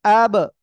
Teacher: দুই ঠোঁট জোরে একটার সাথে আরেকটা বাড়ি খাচ্ছে ঠিক আছে তখন ওই আরেকটা আওয়াজ হচ্ছে আব তারপরে আক তারপরে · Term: কলকলা